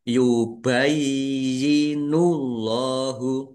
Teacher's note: Allahnya dibaca tebal karena harakat di depannya dommah. Lam fathah berdiri mad thobi'i.